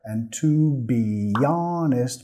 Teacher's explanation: nota acá que la H en honest es muda, no lo vas a escuchar. And to be honest, vamos a vincular metiendo el sonido Y.